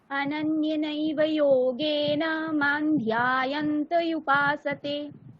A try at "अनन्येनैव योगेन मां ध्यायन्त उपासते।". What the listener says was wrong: অনন্যে একারটাকে টানতে হবে। অনন্যেনৈব যোগেন মাং ধ্যায়ন্ত উপাসতে।